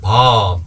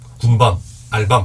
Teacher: 본래 길게 발음이 나던 단어도 둘째 음절 이하로 오면은요 짧게 발음되는 경향이 있습니다. 네, 그래서 길게 발음할 때 밤, 그쵸?